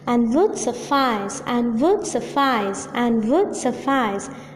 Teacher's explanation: Unstressed, stressed, unstressed, stressed. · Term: Iambic diameter